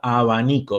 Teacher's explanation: cuando digo abanico los labios no se nos llegan a juntarse · Vean que cuando digo abanico, los labios no llegan a juntarse. Es una B muy suave, ¿no? Que tiene un símbolo fonético específico para eso. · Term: sonido freak a tivo, sonido fricativo